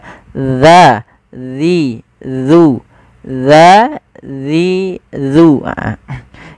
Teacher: ujung lidah kita menempelkan dengan gigi seri atas kita